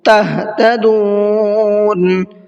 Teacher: اس ہا کو بھی حلق سے نکال کر کے پڑھنا ہے